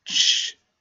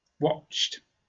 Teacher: at the end is ch, no voice. Ch, just a sound from the mouth.